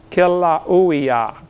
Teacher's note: they pronounce every vowel over there in Hawaii